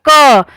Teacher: हमारी जुबान होती है बिल्कुल सीधी रहती है और हमारे कंठ से आवाज निकलती है